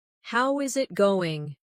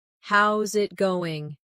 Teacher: Instead, how is it going becomes how's it going? The is disappears and the final G in going often softens. This is called connected speech.